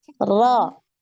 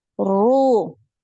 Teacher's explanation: Ro, nah ini harus naik pangkal lidah, ro. Jadi pangkal lidah yang mana yang naik itu makhrajnya huruf qaf, ya. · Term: Ro tebal